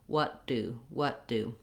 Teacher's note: i'm going to be using what's called the stopped t and that means that i'm not going to use a t sound and a d sound